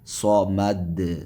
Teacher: صاد کو موٹا پڑھیں گے، اس لیے کہ حروف مستعلیہ میں سے صاد ہے